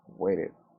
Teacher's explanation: the t is pronounced as r in American English because the t is between 2 vowels